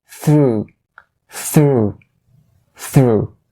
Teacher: it has the first consonant as a voiceless th sound so that's why you have to push a little bit of air out of your mouth